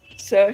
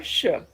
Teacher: And sir is alveolar. So it's just the blade against the alveolar ridge. But when you say sh, it is not only the blade, but it is also the front of the tongue that you need to place against the hard palate. So a greater part of the tongue is against the roof of the mouth. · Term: palato-alveolar